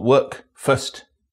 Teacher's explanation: The NURSE vowel is distinctive in some words, which are pronounced with a schwa sound